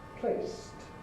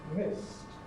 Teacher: If, however, the stem ends in a voiceless consonant, then we make the suffix voiceless as well. We have a t sound.